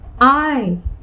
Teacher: the first vowel is A, which has a greater vowel quality, and the second one is rather feeble, or which has lesser prominence than the first one, I. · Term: falling diphthong